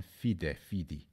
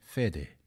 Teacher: The short I in Latin fidem has stayed the same in Sardinian and Sicilian fide, fidi, but has changed to an e in northern Italian fede